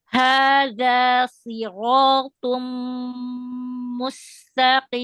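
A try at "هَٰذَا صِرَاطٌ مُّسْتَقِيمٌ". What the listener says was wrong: Shotnya tebalkan lagi. Siratum.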